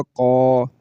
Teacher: آگے قاف آ گیا تو قاف کے اوپر زبر ہے اور زبر کے بعد الف آ گیا تو اس قاف کو لمبا کریں گے تو الف کی آواز نکل آئے گی اور یہ بن جائے گا قا۔